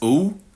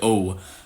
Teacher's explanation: I have that backgliding goose.